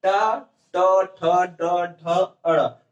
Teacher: ट वर्ग जिसको बोलने में हमारी जीवा जो है मूर्धा पे स्पर्श करती है